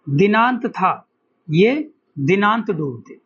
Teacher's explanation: इसमें क्या है कि द और ता द और ता जो है दो दंतीय हैं। द और ता कैसे हैं? दंतीय हैं और एक ही वर्ग के वर्ण इसमें आ रहे हैं।